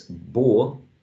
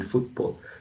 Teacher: Usually in a more RP dialect or BBC English, you get a long O.